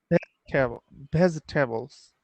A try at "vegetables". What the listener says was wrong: It's like do not pronounce the E. Vegetables.